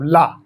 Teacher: ला देखिए दंत से जाकर टकरा रहा है, इसलिए इसका उच्चारण स्थल दंत होगा